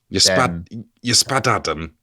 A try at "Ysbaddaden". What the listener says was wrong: Pretty much there. But double D is pronounced th.